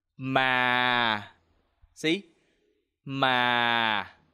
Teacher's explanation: The second tone is low falling tone. When you pronounce this tone, you have to try to lower your voice a little bit.